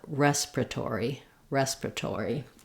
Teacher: say it this way respiratory with all of the syllables but you will also hear native speakers reduce it to respiratory down to four syllables from five